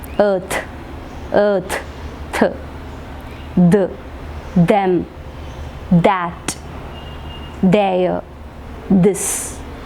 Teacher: the tip of the tongue, it is touching the upper teeth and then produce the sounds th and the. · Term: dental sounds